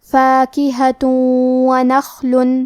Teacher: واو حروف الادغام بغنہ میں سے ہے، اور ادغام کا معنی ہے حرف کو حرف میں داخل کرنا، تو ہم یہ تنوین کو واو میں ملا کے غنہ اور تشدید کے ساتھ یہ حکم کو ادا کریں گے۔ فاکہۃ ونخل، کلمت نخل میں حرف الخاء ہے، ہمیں حرف الخاء کو بھاری آواز میں پڑھنا ہے۔